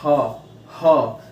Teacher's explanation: आप देखिए, बोलिए ह। जब आप ह बोलेंगे तो आपके मुंह से गर्म हवा बाहर निकलेगी, इसलिए इसे उष्म व्यंजन कहते हैं